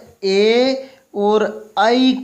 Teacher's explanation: ए और आई का उच्चारण स्थान है वो कंठ तालु होता है, कंठ और तालु।